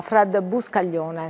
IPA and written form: ˈfrɛd buskaʎˈʎoːne (Fred Buscaglione)